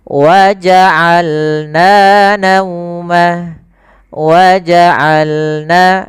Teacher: dari tengah tenggorokan kita lafalkan ain